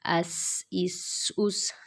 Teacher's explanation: سین کو پڑھتے ہوئے سیٹی کی آواز آنی چاہیے